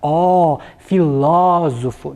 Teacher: nós temos a sílaba ló como a mais forte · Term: vogal é mais aberta